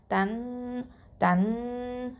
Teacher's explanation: நூனை வந்து ஹைட் பண்ணி குன்னா செஞ்சு ஓதணும் அப்போ தன் தன் அப்படின்னு மூக்குல நிறுத்தி வச்சு ஓதணும் அடுத்ததா சீன் ஃபத்ஹா